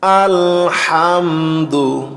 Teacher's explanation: এখানে মিম সাকিনের পরে বা মিম নাই তাই গুন্নাহ হবে না।